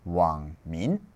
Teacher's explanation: the third tone is going to lose its tail. It's going to lose the bit where it comes up, and it's just going to go down.